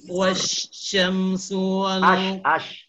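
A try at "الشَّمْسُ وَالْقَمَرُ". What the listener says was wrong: As bukan was.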